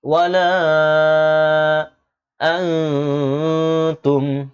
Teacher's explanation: নুন সাকিনের পর তা এসেছে ইখফার গুণা করতে হবে